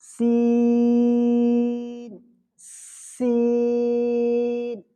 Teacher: ان حروفوں میں سے ہم کو سیٹی نکالنی پڑے گی۔ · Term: سیٹی والے حروف